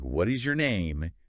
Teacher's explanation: English speakers tend to let their intonation fall at the end. >> Fall down.